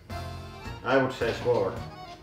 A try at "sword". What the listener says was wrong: I think it's without we. It's sword.